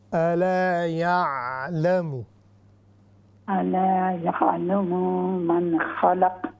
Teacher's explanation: تھوڑا سا ہیوی کر دیں قاف کو اور عین کو